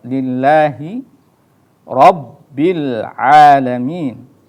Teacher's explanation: Kemudian lillahi, nah di situ ada lafdzul jalalah yang tipis ya. Jadi dibaca tipis tetapi dibaca 2 harokat.